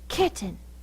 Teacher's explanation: You had the most force at the first syllable and not the last syllable. Because this one had the most force, it keeps its sound.